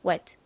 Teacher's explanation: 빠르게 발음하면 wet 이렇게 받침처럼 들립니다 · t는 트 소리 나죠? 그런데 이렇게 끝부분에 오면 들릴동 말동 약하게 소리가 나요. 이렇게 바람 빠지듯이.